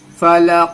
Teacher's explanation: फलक हुरूफ कलकला है काफ आवाज को टकरानी है